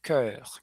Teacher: Eh, hã, o último som aqui, a combinação do O e o e, né, nessa letrinha, ele tem um som que não tem em português, que é um e arredondado, tá? Então, uma letra E de elefante, só que com um biquinho arredondado